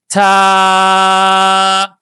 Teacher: ta's Makharij is tip of tongue and roots of upper 2 teeth. Upper front 2 teeth.